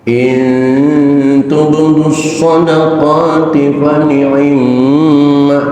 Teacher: tasdid yang ada di atas huruf mim sama dengan tasdid yang ada di atas huruf nun, berlaku hukum gunnah musyaddadah ditahan · in mati ketemu tak hukumnya ikhfa aqrab, suaranya suara n